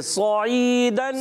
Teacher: बाज़ बच्चे सीन से पढ़ते हैं सईदन, यहाँ है सौद, क्या है? सौद, मोटा करेंगे